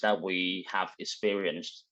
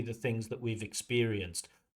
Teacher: That stress should be on experienced, not on the have.